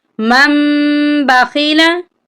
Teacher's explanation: یہاں پر ہم نے میم کو چھوٹی میم کے ساتھ ملا کر پڑھنا ہے، نون کا صرف ہلکا سا ساؤنڈ آنا چاہیے، اور میم پر ہم 1 الف کی مقدار کے برابر غنہ کریں گے۔